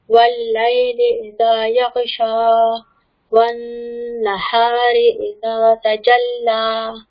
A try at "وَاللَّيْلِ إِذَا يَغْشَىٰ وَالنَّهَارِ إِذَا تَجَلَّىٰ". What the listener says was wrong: دیکھیں واللیل نہیں بولیں گے واللیلی والنہاری.